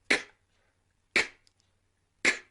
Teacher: this is a voiceless sound. That means we don't use our vocal cords. We don't vibrate. We just blow air like this.